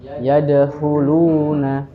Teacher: Dalam rumus wau sukun sebelumnya dammah itu adalah rumus dari mad thi. Yang harus dipanjangkan dua harakat saja. Tidak boleh lebih, tidak boleh kurang. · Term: mad thabi'i